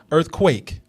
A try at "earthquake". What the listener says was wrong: You really, you're stretching your mouth out a lot.